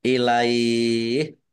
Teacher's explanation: Fathah ya sukun kalau bertemu dengan huruf terakhir yang dibaca sukun karena wakof, ini namanya mat layin. Mat layin itu dibaca melunak atau melemah. Ya, bisa panjang ya 2, 4 atau lebih